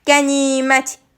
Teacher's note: Müsibət i saiti uzun tələffüz olunur, qapalı saitdir. Qənimət i saiti uzun tələffüz olunur və qapalı saitdir